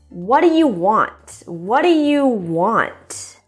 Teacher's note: remember your intonation Rises and then Falls